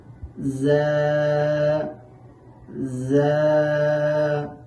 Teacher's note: এই যা হরফটি উচ্চারণের সময় জিহ্বার আগা সামনের নিচের দুই দাঁতের পেট ও আগার সাথে লাগাইয়া উচ্চারণ করতে হবে